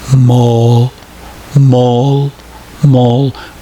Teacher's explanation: In the dark L, we do not release the air when we finish the sound. So the tongue does not go down. Now look at the movement of the tongue in the word mole.